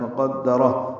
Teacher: قاف کو دال سے ملانا ہے، دال کو جلدی پڑھنا ہے ، را پر پڑھنا ہے اور اس کو ہا سے ملانا